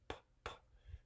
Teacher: If you make a p, you can clearly notice that there's no vibration of any kind